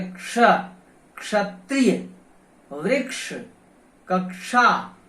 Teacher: इसमें छ है ही नहीं, क और श है, तो क और श मिलकर के बनता है, तो इसमें छ है ही नहीं, तो छ उच्चारण करना तो गलत होता है। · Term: क्षत्रिय वाला क्ष